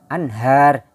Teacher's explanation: Jadi membacanya anhar, jangan anghar, anghar, salah. Jadi nunnya jelas berbunyi an, anhar, tahtihal anhar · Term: izhar